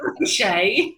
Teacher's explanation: Like, it rolls off the tongue and it feels quite onomatopoeic, and that shush sound in the middle is called a sibilant sound